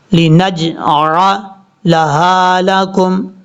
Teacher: نون کے بعد جو جیم ہے یہ جیم حروف قلقلہ میں سے ہے، یہاں پر قلقلہ کریں گے